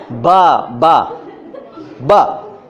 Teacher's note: एक लिप दूसरे लिप से मिल गया, बंद हो गया, खुला, बा बा बा, तो निकलेगा बा साउंड।